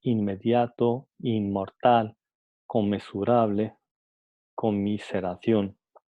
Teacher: En el habla cuidada estándar suele mantenerse la articulación alveolar N en palabras como inmediato, inmortal, conmensurable, conmiseración.